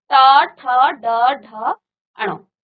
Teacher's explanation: तो जब आप इनका उच्चारण करते हैं तो यह आपकी मुर्धा को स्पर्श करता है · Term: मूर्धन्य